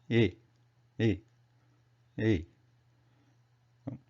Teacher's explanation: the final position of the lips is stretched side to side like E